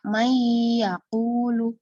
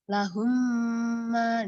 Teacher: di sini ada dengungan antara nun sukun dengan ya May yaquulu kemudian lahumma lahumma di situ ada dengungan maka itu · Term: gunah Arid